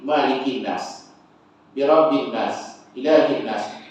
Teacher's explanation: Jadi nun tiga-tiga tu dia ada satu, ada syiddah ya. Maka dari situ jadi wajib gunnah situ.